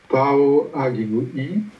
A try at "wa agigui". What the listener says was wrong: On reviendra après, hein, le pas agigui. Hein, c'est wa agigui. Wa, wa, wa.